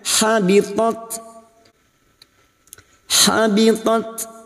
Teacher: bertemu dengan huruf ta sukun yang memiliki sifat Hames dan sidah